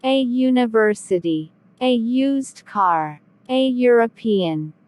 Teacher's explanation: university begins with the letter u which is a vowel however it sounds like you with a y